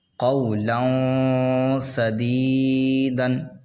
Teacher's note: یہاں پر اخفا ہوگا، تنوین کے بعد سین آ رہا ہے اس لیے